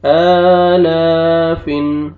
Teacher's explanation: آپ نے حمزہ کو بھی اور لام کو بھی کھینچنا، دونوں کو کھڑا زبر ہے